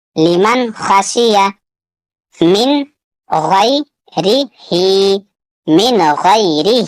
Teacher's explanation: یہاں یا ساکن سے پہلے زبر ہے، یالین ہوگا، ہا کے نیچے کھڑا زیر ہے، اسے تھوڑا کھینچ کر پڑھنا ہے